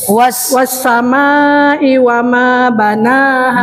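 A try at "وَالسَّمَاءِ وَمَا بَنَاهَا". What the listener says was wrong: manya lima harokat dong, was manya lima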